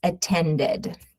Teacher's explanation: Verb ending in D, we're going to add an id sound.